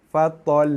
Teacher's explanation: Lidah kita tekan dekat langit, panjangkan sikit tekanan tu. Tekan lama sikit, jangan lepas cepat sangat. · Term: bacaan sabdu pada lam